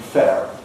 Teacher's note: Americans kept the R, but shortened the vowel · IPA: /fer/